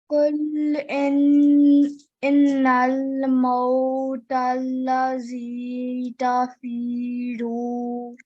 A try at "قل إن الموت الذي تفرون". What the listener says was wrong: Over here, there's a tashdid as well on the ra. So we need to join this strongly. Tafiruna.